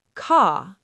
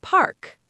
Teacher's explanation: In British English, we often don't pronounce R at the end of words or before consonants